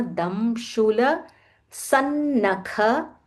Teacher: There is a half na and then followed by a full na, so stress on that half na.